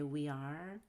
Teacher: we connect we and are with a y